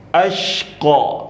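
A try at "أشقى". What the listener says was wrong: Nggak boleh monyong. Hamzahnya sempurnain.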